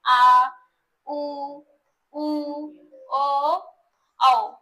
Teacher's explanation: पश्च स्वर। पश्चर यानी जीभ के बिल्कुल पिछले भाग से